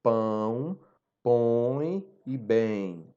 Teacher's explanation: você fala bem pelo nariz você percebe essa produção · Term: nasal